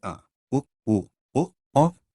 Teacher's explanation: जिन स्वरों के उच्चारण में जिह्वा का पिछला भाग उत्थापित होता है उन्हें पश्च स्वर कहते हैं